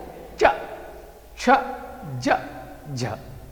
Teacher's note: तालू पे लग रहा है एक ही जगह